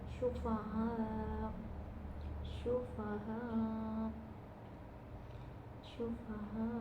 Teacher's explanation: ada Mad bertemu Hamzah dalam satu kata dibacanya 4 sampai 5 harakat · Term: mad wajib muttasil